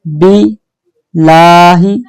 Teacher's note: यहाँ अल्लाह का लाम बारीक पढ़ेंगे, मोटा नहीं पढ़ना, क्योंकि बा पर जेर है।